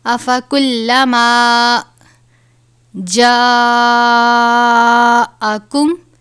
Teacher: الف کے اوپر بڑی مد ہے، اس کی مقدار 5 الف کے برابر ہے، یعنی اس کو 5 الف کے برابر لمبا کر کے پڑھنا ہے.